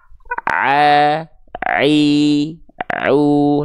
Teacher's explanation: jadi huruf Ain itu dilafalkan tepat dari bagian tengah tenggorokan kita tepatnya pada bagian katub epiglootti oke nah sekarang banyak orang melafazkan